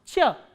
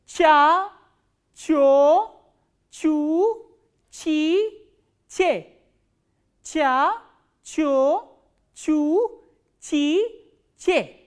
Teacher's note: middle part of your tongue goes up and this sound is pronounced ch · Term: Ch sound